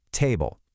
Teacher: When you say this T, you must clearly expel air from your mouth. Try putting your hand right in front of your mouth and say it. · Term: regular T